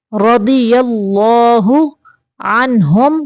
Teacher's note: ہم پہ صرف میم کو ظاہر کرنا ہے، لمبا نہیں کرنا، اظہار شفوی کا قاعدہ ہے